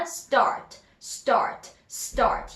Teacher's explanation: S 다음에 T니까 start 할 때 S 다음에 T 바로 나오는 S 다음에 T는 보통 미국식 영어에서는 된 소리가 나온다